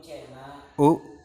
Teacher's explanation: A, vokal depan rendah tak bundar. U, vokal belakang atas bundar